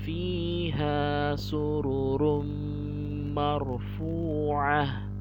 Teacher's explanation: Ketika ada ta marbutoh di akhir ayat, maka dia berubah menjadi huruf ha besar ya.